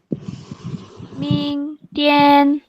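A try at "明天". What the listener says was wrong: Nada 2 emang susah.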